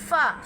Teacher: اوپر کے دانتوں کے کنارے اور نچلے ہونٹوں کے تر حصے سے ادا ہوتا ہے